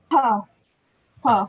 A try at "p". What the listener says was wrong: it's not pa, it's not pa. Put your hand on your throat and say, there should be no vibration. Pag may vibration, mali yun. Again, it's just no sound. Just dapat walang vibration. So it should not be pa. Pag walang vibration, you are doing it correctly.